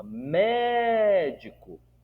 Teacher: Se eu cantar a palavra médico, eu vou dar ênfase na antepenúltima.